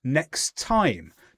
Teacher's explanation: Join them together. Next time, just one t sound.